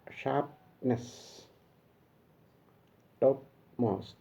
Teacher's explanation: the nasal plosion, because the sound takes a course through the nose